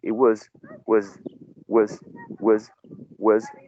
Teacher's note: so you can use a schwa in uh was